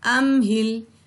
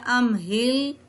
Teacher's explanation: میم کے اوپر ہم نے غنہ نہیں کیا، یعنی ہم نے ام کی آواز نہیں نکالی